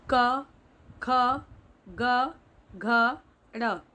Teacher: इनका उच्चारण स्थान है कंठ, यानी इन्हें कंठ से बोला जाता है। जब हम इनका उच्चारण करते हैं तो वायु कंठ से बाहर निकलती है।